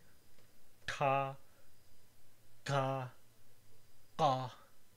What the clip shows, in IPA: ʈa ka qa